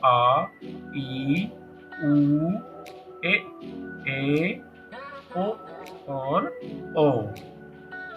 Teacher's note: इन्हें उच्चारण करने में ह्रस्व स्वर की तुलना में दो गुना समय लगता है। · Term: दीर्घ स्वर